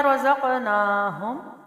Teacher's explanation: را زبر ہے تو موٹا پڑا جائے گا، زبر اور پیش کے ساتھ موٹائی ہے را کی